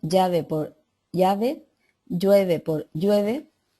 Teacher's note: no distinción entre elle y la y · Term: lismo